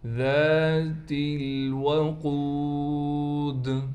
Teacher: قاف کو موٹا پڑھا جائے گا۔ قاف کے بعد واو ہونے کی وجہ سے قاف کو بھی کھینچیں گے۔ دال پر وقف کی حالت میں قلقلہ کیا جائے گا.